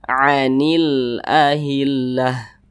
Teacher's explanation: silakan saudara perhatikan di samping itu Nah maka cara bacanya itu huruf lamnya itu diizharkan jadi dibaca jelas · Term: alif lam qamariah